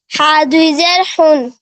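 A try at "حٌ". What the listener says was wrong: এটা দুই জের না, এটা দুই পেশ, ঠিক আছে। দেখেন দুই জের কি নিচে থাকে, হ্যাঁ এরকম, আর দুই জবর উপরে থাকে, ক্লিয়ার।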